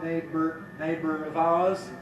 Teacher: Schwa plus R gives you syllabic R